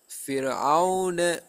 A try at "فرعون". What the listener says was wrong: ஃபிரு அது ரா விட்டுட்டு போயில அது ரா உச்சரிக்கணும். ரா உச்சரிக்கிறது விளங்கணும். ராக்கு சுக்குனை வச்சு உச்சரிக்கணும். இங்க ஃபே இல்ல பிரச்சனை. ராவும் பிரச்சனை இல்லை. ராவை கலக்கிறான் பிரச்சனை. ஃபிரு ஃபிரு என்ன ரா கலக்குது.